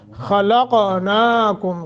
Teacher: خا قاف کو موٹا اور قلقلہ بھی کرنا ہے قاف پر